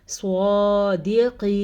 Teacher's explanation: صاد کو ہم نے پر پڑھا ہے کیونکہ وہی بات صاد حروف مستعلیہ میں سے ہے